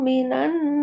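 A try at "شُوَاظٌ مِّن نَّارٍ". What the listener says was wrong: Bukan minan minan tahan dulu. Suwadum bukan minan. Minna.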